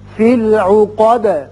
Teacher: آیت ختم ہو رہی ہے دال ساکن کر دیں گے، دال کی صفت قلقلہ ادا ہوگی